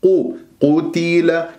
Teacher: قاف مفخمة مرتبة ثالثة مضمومة قو قتل كسرة التاء لازم أنا ما أختلسها قتل لا قتي